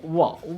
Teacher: तो जैसे देखिए वाह कहिए, तो वाह कहिएगा तो दांत का स्पर्श, हल्का सा दांत स्पर्श करेगा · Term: दंतोष्ठ